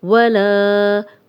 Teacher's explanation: لا الف مدہ، خالی الف لام پہ زبر 2 حرکات لمبا کریں گے